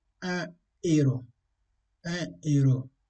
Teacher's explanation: Après un H aspiré, on ne doit pas faire la liaison.